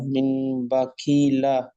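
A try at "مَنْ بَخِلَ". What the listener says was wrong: দেখেন এখানে ভুল হচ্ছে, মিম নুন যাবার মান, বা আসবার বা, যখন বা আর বা পড়ে তিনটে একসাথে মেলাবেন তখন আর মান বলবেন না, মাম বলবেন, মাম বা। হজের কি, এটা হা নয়, এটা আপনি হা পড়েছেন, এখানে নোক্তা আছে, খ হবে। হ্যাঁ, মাম বাখিলা। মিমের উপরে জাবার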